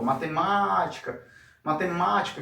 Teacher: Então se está o acento é ali que está a sílaba tônica, ok? Então nesse caso aqui é o ma que vai ser a nossa sílaba tônica. Se você reparar, a posição do ma aqui é a antepenúltima, né? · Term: proparoxítona